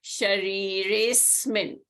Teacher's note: So Sharire Asmin, A is replaced by the avgraha, is elided and is not pronounced. Shariresmin, you don't pronounce the A.